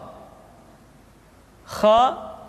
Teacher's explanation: dikeluarkan dari pangkal tenggorokan di pangkal tenggorokan diucapkan dengan mengalir nafas Hai atau lebih praktisnya